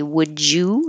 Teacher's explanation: the D and the Y always make a j together and you can connect this and say would you and keep